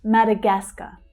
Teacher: So we have a couple of stressed syllables here but the third one is the strongest.